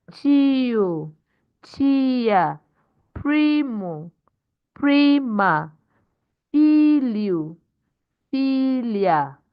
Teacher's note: Those are two syllables, but the first syllable will be stressed because it is the second to the last.